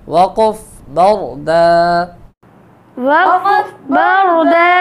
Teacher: را کو موٹا پڑھیں گے، را ساکن سے پہلے زبر ہے اور دو زبر کی تنوین کو وقف میں الف سے بدل دیں گے اور ایک الف کے برابر لمبا کریں گے